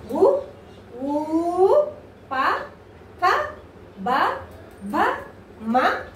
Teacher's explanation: ఇవి మనకి పెదవుల నుంచి పుట్టుకొచ్చిన అక్షరాలు కాబట్టి వీటిని ఓష్ట్యాలు అని చెప్పేసి అంటారు.